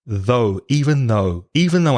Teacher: the pronunciation of though it's a strange spelling th ough but the pronunciation of the vowel sound is o like go or slow or blow or throw